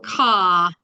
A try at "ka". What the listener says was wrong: If we can lower that vowel, please, then we've got it. Ka.